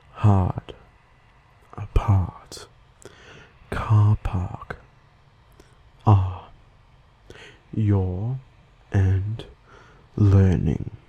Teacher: we do not pronounce the R sound like people from the US do. Just from listening, you can tell that I say it more like an R sound instead of a harder R sound. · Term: Non-rhotic R sound